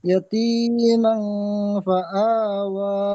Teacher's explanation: তানবিনের পরে ফা হুরুফে ইকফার 15টি তানবিনের অক্ষরের মধ্যে হতে, তানবিনের পরে পূর্বে ইকফা 15টি অক্ষরের মধ্যে হইতে ফা এসেছে, তাই তানবিনের আওয়াজ নাকে তুলে এক আলিফ পরিমাণ গুণনা করে পড়তে হবে